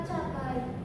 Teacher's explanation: Gerakan dari posisi rendah A menuju tinggi I tanpa membulatkan bibir.